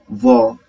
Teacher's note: जब व का उच्चारण करते हैं क्या होता है, दांत और ओष्ठ का मिलन होता है, व, है ना, तो इसलिए इसको दंत और ओष्ठ स्थान है। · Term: दंत ओष्ठ